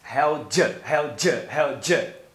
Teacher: E aqui ele reduz a palavra your para um schwa. Então, your vira apenas um schwa.